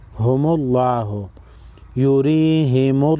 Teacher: लफ्ज़ अल्लाह से पहले वाले हर्फ पर पेश है। लफ्ज़ अल्लाह को मोटा पढ़ेंगे।